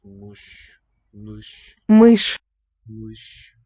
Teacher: mush, with a high central vowel